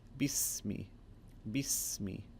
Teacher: Ikra, ikra, the raw, the heavy raw. And also a nice example of the seen and its high pitched sound.